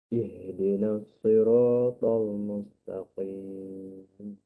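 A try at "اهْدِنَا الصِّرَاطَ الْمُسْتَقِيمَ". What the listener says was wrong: Huruf sin kena jelas sikit. Saya ajar student senyum. Senyum.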